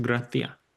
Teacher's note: Andalucia in particular practices the aspiration of final s's, which is any word that has an s at the end of it, they tend to drop that sound alto together.